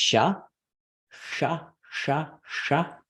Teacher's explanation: when people do an Indian accent right oftentimes you'll hear um this curling back of the tongue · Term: retroflex sounds